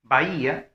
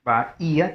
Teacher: Y lo siguiente es que en este caso la palabra es bahía, vamos a ver, bahía, tendría que ser 3 sílabas, porque lo que ocurre es un hiato acentual, se separa la A de la I y la I de la A